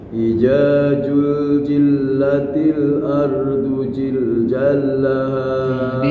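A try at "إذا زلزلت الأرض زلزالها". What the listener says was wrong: Dipastikan Pak, harokatnya itu dilihat tasdid yang mana tasdid yang mana bukan. Izazul zilatil ardu zilzalaha gitu. Jangan iza, lihat lidahnya Pak. Nah, huruf ja sama za itu jangan disamakan.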